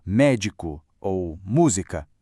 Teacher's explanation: palavras bem diferentes com a força lá na antipenúltima sílaba